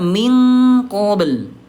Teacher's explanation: Langsung dekatkan ke qaf. Huruf qaf kan di pangkal nih ayah Bunda ya